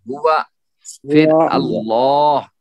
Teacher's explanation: اللہ کا لام جو ہے جیسے یہاں تک ہوا موٹا، ہوا، پھر اللہ یہ موٹا ہو، یعنی پر ہوگا اس کو، کیونکہ اس سے پہلے زبر ہے